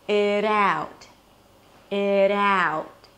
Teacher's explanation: The T at the end is just a held T or a very light T, so you don't have to overly pronounce it. · And when you connect the words together, it sounds like 'idaut'.